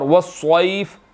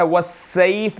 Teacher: اور وَالصَّيْف، صاد، صویف کا صاد یہاں پر موٹا ہے، وَالسَّيْف نہیں پڑھنا